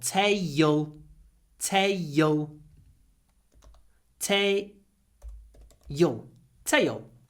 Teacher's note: Here we have an A sound before a L. And usually when we have A before a L at the end of a word, we add a syllable.